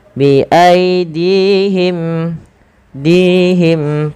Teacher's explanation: Panjangkan dinya dua harakat karena di sini ada ya kecil